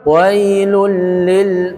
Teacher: idgham bila ghunna tidak ditahan tapi hanya ditekan · Jangan wailul, ya, karena dia tidak gunnah. Jadi langsung ke lam. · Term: idgham kamil